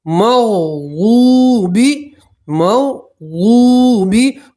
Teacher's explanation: واو کے ساتھ واو مدہ ہے اس لیے ایک الف کے برابر کھینچیں گے